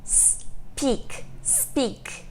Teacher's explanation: A gente não coloca nem I no começo nem no final.